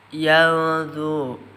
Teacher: ikhfa hakiki ausat atau tengah dibaca samar 2 harakat